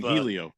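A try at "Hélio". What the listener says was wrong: It's you don't pronounce the H.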